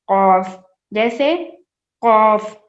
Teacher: آخری زبان کے اوپر کوا ہے. آخری زبان کا آخری حصہ اور کوے کا شروع کا حصہ ہم جب ملائیں گے تو حرف قاف ادا ہوگا